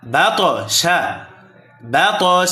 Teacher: ত আবার কলখলার হরফ প্রতিধ্বনি আওয়াজ হবে